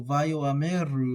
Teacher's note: So a lot of people are going to leave that silent, and they're going to say something like Vayomeru. I like pronouncing the Aleph when it's there, so Vayoameru is how I would say it.